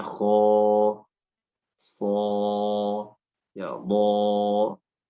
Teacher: ketika dia berhadapan dengan huruf isti'la, maka alifnya dibaca tebal. Ya, misalnya kho, so, ya, bo.